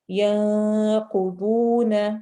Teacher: نون کی آواز کو چھپا کے غنہ کرتے ہوئے یعنی ناک میں آواز لے جاتے ہوئے لمبا کریں گے. قاف اور ضاد دونوں موٹے حروف میں سے ہیں، حروف مستعلیہ ہے.